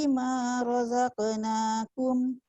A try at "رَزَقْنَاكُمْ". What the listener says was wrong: Khaf tebalkan sikit. Razaqnakum.